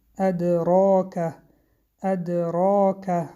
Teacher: بعد از حرف را الف آمد مد طبیعی و حرف را غفظ خوانده می شود · حرف دال با سکون قلقله صدا می دهد